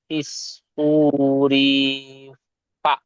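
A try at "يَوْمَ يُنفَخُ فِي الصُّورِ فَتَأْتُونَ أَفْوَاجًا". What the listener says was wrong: ফিসুরি বলে টান দিচ্ছেন, রটা টান হবে না, ফিসুরি, সুটা টান হবে ও মাদ্দা, ফিসুরি। রি টান হবে না, ফিসুরি। ফাতাতুনা। হ্যাঁ, ইয়াউমা ইউনফাখু ফিসসুরি ফাতাতুনা আফওয়াজা।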